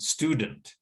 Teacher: Stu gets the first stress. The second syllable gets the schwa sound